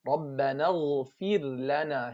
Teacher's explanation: Show the ghain, give it its rakhawa. · Here we have ra sakina followed by lam. We don't have idgham here.